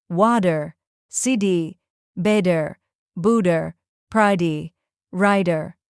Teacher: This soft d or flap is one of the most recognizable traits of American English. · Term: American flap